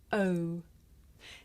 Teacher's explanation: this is a diphthong a double vowel sound the shape the mouth makes changes from the beginning of the sound to the end